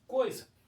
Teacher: Na palavra coisa, eu tenho uma vogal aqui, o O, ó, e tenho uma semivogal, que é a letra I.